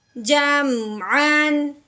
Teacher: ہم نے میم کو ظاہر کر کے بغیر غننے کے پڑھنا ہوتا ہے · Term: میم ساکن